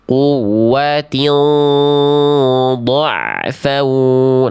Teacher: Kasroh tain ketemu huruf mod. Nah, mod itu huruf tebal maka ikhfanya harus tebal. Angkat pangkal lidahnya. Ain yang ini jangan putus bunyinya. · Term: ikhfanya tebal